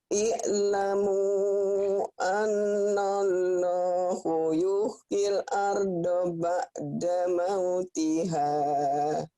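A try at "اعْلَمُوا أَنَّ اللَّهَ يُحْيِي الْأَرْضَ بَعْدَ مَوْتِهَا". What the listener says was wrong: I'lamu annallaha yuhyil arda ba'da mautiha. I'lamu annallaha. I'lamu annallaha yuhyil arda ba'da mautiha. Annallaha. Annallaha bukan hu.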